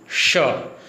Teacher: स, तो ये स है वो श में बदल जाएगा। षटकोण, आप जब श का उच्चारण करेंगे तो आपकी जीभ है वो मूर्धा के पास जाएगी और बीच में से हल्की सी हवा निकलेगी। श, तो दंत्य स श में बदल जाता है। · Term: मूर्धन्य श